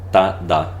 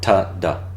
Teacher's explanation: In Spanish, it's T's and D's are dental